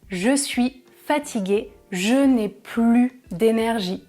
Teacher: Je ne prononce pas le S parce que c'est une phrase négative. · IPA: [ply]